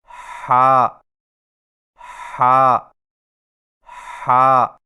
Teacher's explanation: ہا کی ادائیگی میں زبان کی جڑ کو حلق کی طرف مضبوطی سے دباتے ہوئے باریک اور رگڑ کھاتی سانس میں پڑھیں، یعنی ہا ہا ہا۔